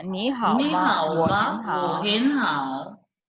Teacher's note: So today you've used only one tone, which is very simple. It is the third tone, you see? It's the third tone everywhere.